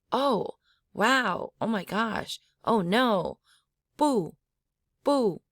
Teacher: the exclamation mark tone is a high falling tone like if you say oh my God